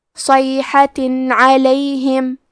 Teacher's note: عین حروف الاظہار میں سے ہے، اظہار کا معنی ہے ظاہر کرنا، اور کیونکہ تنوین کی اصلیت نون ساکن ہے تو ہم یہاں تنوین ظاہر کریں گے اور اسے نون ساکن پڑھیں گے اور بغیر غنہ سے یہ حکم کو ادا کریں گے